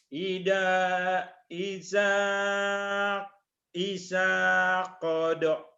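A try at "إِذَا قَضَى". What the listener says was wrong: idza, jangan isa. Idza qada, idza qada.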